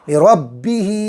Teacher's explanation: ہاں کے نیچے کھڑی زیر کھینچ کے پڑھیں گے